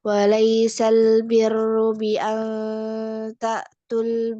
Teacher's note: Jadi salah satu harus dihazab, harus dihilangkan. Nah, huruf matnya yang dihilangkan langsung masuk ke huruf sukun ya. Huruf sukun yang satunya yang al. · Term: iltiqa usakinain